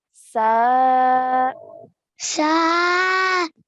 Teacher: Then we have a sin with a fatha on top and then an alif madda. So stretching for 2 counts.